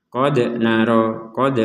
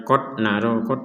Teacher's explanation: Di sini ada qalqalah nih. Dal sukun ini disebut qalqalah. Jadi huruf pantulan.